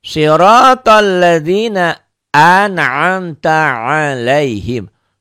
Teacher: Sadnya kosor, pendek, ro-nya tebel, tabkhim. Kenapa? Karena ro-nya baris di atas.